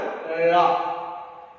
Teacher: இந்த கண்ணகர பிறந்துச்சுல அதே இடத்துலதான் இந்த லகரமும் பிறக்கின்றன. நம்ம நாவின் நுனி மேல்வாய் அன்னம் அந்த அன்னத்தின் நடுப்பகுதியை தொடுவதால் இந்த லகரம் பிறக்கின்றன.